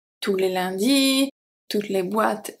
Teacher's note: we do not pronounce the S at tout when it's plural